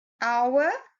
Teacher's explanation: But when you pronounce it, it is an ow sound, which is a vowel sound.